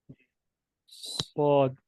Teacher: सौद, इसमें भी हमारी जुबान जो है वो नीचे वाले दांतों पे लग रही है, आप देखें, लेकिन इसमें सौद को ऐसे पढ़ते हैं जैसे हमने मुंह में हवा भरी हो, ठीक है, मुंह में हवा जी भर के रोक के फिर उसको निकालते हैं, और ये मोटा हरूफ है, मोटा हर्फ है, इसको मोटा अदा करते हैं।